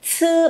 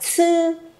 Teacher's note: Tư, bật hơi nào, tư chứ không phải là chi